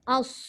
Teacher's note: Okey, cuma yang ketara antara tiga ni sad lah. Sad ni masa kita menyebut, lidah yang hujung tu tetap juga di belakang gigi bawah. Tapi pangkal lidahnya terangkat ke lelangit. Menyebabkan huruf sad itu dibunyikan tebal.